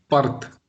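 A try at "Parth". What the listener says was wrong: No, no, you cannot even say pa, because pa carries sound a.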